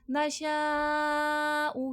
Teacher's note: بڑا مد ہے 5 سے 6 الف کی مقدار کے برابر کھینچ کے پڑھا جائے گا